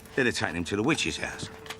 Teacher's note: the drop of H sound at the beginning of the words